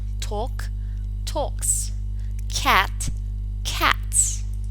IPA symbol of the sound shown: s